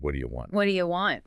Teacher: And again, the do you becomes yah.